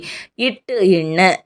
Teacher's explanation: நாவினுடைய நுனி அன்னத்தின் நுனி